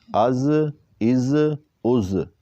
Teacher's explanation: تو یہ حروف صفیریہ میں سے ہے، اس میں ہم نے سی ٹی کی آواز نکالی ہے۔